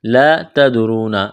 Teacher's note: لا تدرون الف مدہ ہے، ایک الف کے برابر کھینچنا ہے، تا کو باریک کرنا ہے، دال پر قلقلہ کریں گے، را کو موٹا کرنا ہے ، واو مدہ ہے، ایک الف کے برابر کھینچنا ہے، ایہم